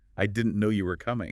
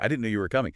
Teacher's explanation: a little emphasis on no and coming